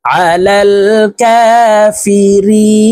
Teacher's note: হরফ তো এই মদের হরফের বামের হরফের পরে ওয়াকফ আসছে তো এই রি কে তিন আলিফ টেনে নুনকে সাকিন করতে হবে তো শব্দটি আমরা এইভাবে পড়ব দেখুন আলাল কাফিরিন فلعنة الله على